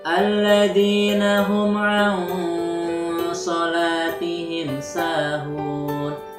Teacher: Nah, shod itu termasuk salah satu huruf ikhfa. Ikhfa artinya adalah samar-samar, maka cara membacanya harus disamarkan pada lafal sholat.